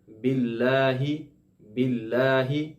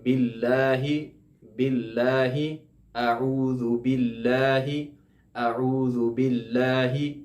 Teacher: لفظ اللہ سے پہلے جب زیر آ جائے تو اس کو باریک پڑھتے ہیں